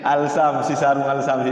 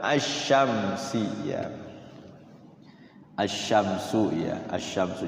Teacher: Kalau al-qamariyah itu lamnya itu langsung bunyi al. Kalau asy-syamsiyah ada lamnya tapi tidak berbunyi lam, lamnya ditinggalin.